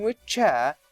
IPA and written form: wɪʧ ʧeə (which chair)